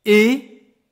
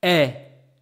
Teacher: It's like one, for the first one, my mouth is kind of closed and stretched. For the second one, it's wide open.